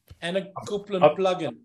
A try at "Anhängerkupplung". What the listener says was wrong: Because of the umlaut, it's the it's not an A, it's an E.